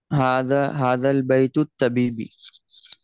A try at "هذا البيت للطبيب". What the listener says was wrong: Okay, यहाँ पे आपने लाम अगेन नहीं पढ़ा. للطبيب.